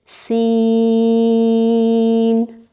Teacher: سین میں بالکل ثنایا علیہ ثنایا سفلی مل جاتے ہیں، ہونٹ چوڑے ہو جاتے ہیں، زبان پھیل کر پیچھے ہو جاتی ہے اور سیٹی جیسی باریک آواز لمبی ہو کر پیدا ہوتی ہے